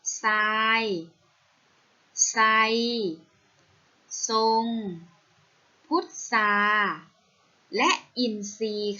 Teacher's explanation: รอเรือตามท.ทหารแล้วออกเสียงเป็นเสียงซอโซ่ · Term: คำควบกล้ำไม่แท้